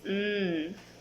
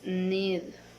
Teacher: Characteristic alveolar nasal voice.